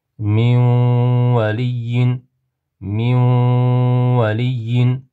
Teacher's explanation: Nunni g'unnali idom harfini ichiga kirgizib dimoq bilan g'unna bilan o'qiymiz.